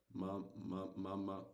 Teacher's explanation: to generate the sound of meme is the same place where we find ba ba so we use the both lips to produce this sound